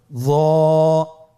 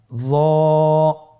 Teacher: জিহ্বার আগা, সামনের উপরের 2 দাঁতের আগার সঙ্গে লাগিয়ে উচ্চারিত।